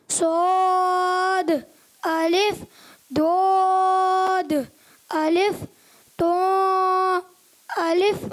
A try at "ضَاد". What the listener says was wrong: اچھا ناک میں آواز جا رہی ہے, تو ناک میں نہیں جانی چاہیے, غلط ہو جائے گا. اچھا ضو, اس طرح ضو موٹا کریں, ضو الف